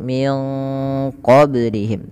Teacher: Awalnya kan min ketemu qof. Jadi min qoblihim sembari agak ditebalkan dalam pelafalan ikhfanya karena dia bertemu dengan huruf-huruf qalqalah. · cara membacanya yaitu suara nunnya disamarkan ke qof. Maka terdengar bunyi ya.